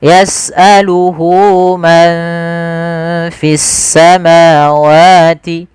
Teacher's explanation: Yaitu 2 harakat. Maka hu-nya di sini panjangkan, jangan yas'aluhu ma, tapi panjangkan dulu. Di sini ada tanda dengan waw kecil. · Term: mad silah qasirah